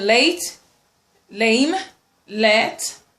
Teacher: Then we have the lateral, alveolar lateral sound, which is l.